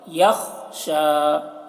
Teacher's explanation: خا کی آواز موٹی ہوتی ہے اور قلقلہ نہیں کرنا ہے خا میں. یخشا خا میں آواز کو روک لینا ہے.